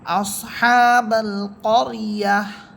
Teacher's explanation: তো এখানে থামলে লাস্ট হরফ যেহেতু গোলতা, গোলতায়ের উপরে থামলে গোলতাকে হা বানিয়ে সাকিন করে পড়তে হয়।